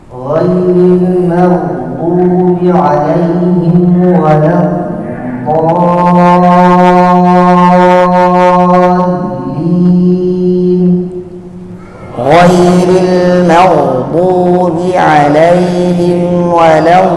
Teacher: Yang kedua, ghin itu keluar suara tertahan nafas. Apabila keluar nafas pada ghin, maka menjadi kha.